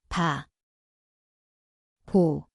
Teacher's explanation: It sounds like B/P. The place is the both lips.